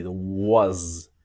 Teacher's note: So the s in was sounds like a Z.